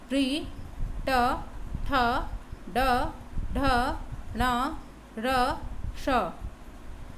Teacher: इसका उच्चारण स्थान क्या है? मूर्धा, इसलिए इसको मूर्धन्य बोलते हैं।